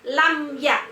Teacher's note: lam ya idhar syafawi karena mim sukun bertemu dengan ya, maka mim dibaca jelas. Jadi cara membacanya adalah mim dibaca jelas.